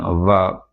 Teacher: கீழ் உதடும் மேல்வாய் பல்லும் இணைவதால் பிறக்கும் எழுத்து